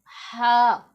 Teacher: یہ والا جو ہا ہے یہ موٹا پڑھا جانے والا ہا ہے، مثلا کہ دوسرا جو ہا ہے یہ والا، اس کو ہم حلق کے درمیان والے حصے سے ادا کرتے ہیں